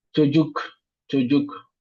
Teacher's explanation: O, c'est une voyelle qu'on appelle voyelle postérieure. U aussi, c'est une voyelle postérieure.